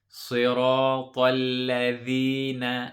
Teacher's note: When we say the dhal, make sure we put the tip of the tongue and touch the top teeth.